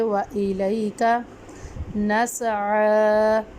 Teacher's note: عین کو ہم ایک الف کی مقدار میں لمبا کریں گے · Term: کھڑی حرکات